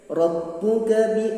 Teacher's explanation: panjangnya satu alif, yaitu 2 harokat yang disebut mad asli